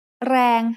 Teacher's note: แรง has a low-class consonant and a live ending, so it is pronounced mid-tone.